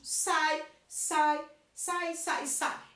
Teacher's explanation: Então quer dizer que se eu abro uma vez só a boca, quer dizer que eles estão juntos. Ele é um ditongo. · a vogal aparece primeiro, vogal, e a semivogal, um ditongo decrescente